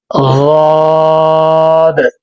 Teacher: زبان کی کروٹ اور اوپر والے داڑوں کی جڑ سے ادا ہوتا ہے۔